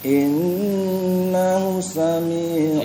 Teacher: Innahunya panjang ya. Ya. Itu masilah qasirah, panjang 2 harokat.